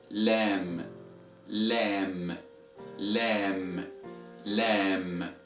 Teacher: And the sound of the letter Lam is equivalent to the letter L in English. So letter Lam is an alveolar letter.